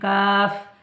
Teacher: লাগিয়ে উচ্চারিত হয় কফ কফ কাফ তারপর দেখুন কাফ জিভের গোড়া হতে একটু সামনে বাড়িয়ে উপরের তালুর সাথে লাগিয়ে উচ্চারিত হয় জীভের গোড়া হতে একটু সামনে বাড়িয়ে উপরের তালুর সাথে লাগিয়ে উচ্চারিত